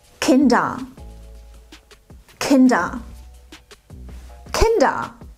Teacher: Dieses E sprechen wir gar nicht aus und das R am Ende wird vokalisiert. Es ist nicht ganz weg, es wird nicht verschluckt, aber es wird nicht mehr als R ausgesprochen.